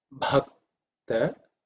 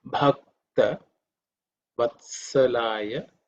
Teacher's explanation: bha is with extra air, aspirated. The 4th letter in the pa varga.